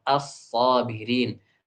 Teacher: Asalnya al-sabirin. Al-sabirin diidghamkan. Lamnya diubah menjadi sad, as-sabirin